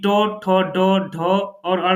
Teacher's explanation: ट वर्ग यानी कि ट ठ ड ढ और ण जो है यह मूर्धन्य के अंतर्गत आते है